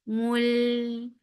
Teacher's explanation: Mul, for dhamma circular lips attached with lam. Lam will get sifa of the wasut and make lam light.